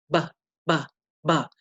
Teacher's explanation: It makes the sound of b, and it's usually represented with the letter B in English. So when we say this letter, we're touching our lips together and separating them.